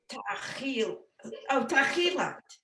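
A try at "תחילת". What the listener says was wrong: So the lamed is the beginning of the second syllable. I think you inverted the second syllable a little.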